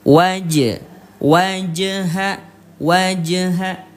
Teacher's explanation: Cara bacanya dipantulkan sampai berbunyi e ya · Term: qalqalah